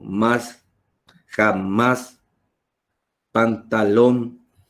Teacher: se tiene que cargar la voz en la última sílaba la tom tom más jamás pantalón se carga la voz si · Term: palabra aguda